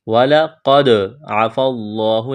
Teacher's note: وَلَقَدْ عَفَا اللَّهُ عَنْهُمْ، وَلَقَدْ، قاف کو موٹا کرنا ہے، دال ساکن ہے، قلقلہ کریں گے دال پر، قلقلہ کہتے ہیں ساکن حرف کو ہلا کر پڑھنا، جیسے وَلَقَدْ عَفَا اللَّهُ، لفظ اللہ کے نام سے پہلے زبر ہے، لفظ اللہ کے نام کو موٹا کرنا ہے۔